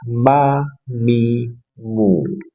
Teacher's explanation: Mim dua bibir dipertemukan dan dirapatkan disertai gunnah.